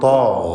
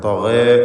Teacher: ഗൈനിൻ്റെ ദീർഘാക്ഷരമായ അലിഫിലും തഫ്ഖീം വേണം.